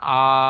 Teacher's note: আলিফ সুতরাং আলিফ মাদ্দাকে এক আলিফ পরিমাণ টান দিয়ে পড়তে হবে